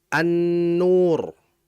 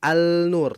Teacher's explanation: Nun juga itu harus dijelaskan ketika dibaca idgham asy-syamsiyah, yaitu lamnya tidak terjelas bacanya dan langsung dimasukkan pada huruf nun.